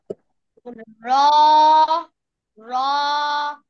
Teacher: জিহ্বার আগার পিঠ তার বরাবর উপরে তালুর সাথে লাগিয়ে এক আলিফ টেনে র মোটা আওয়াজে পড়বো